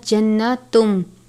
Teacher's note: تن نہیں پڑھنا بلکہ تم پڑھیں گے میم کی آواز کے ساتھ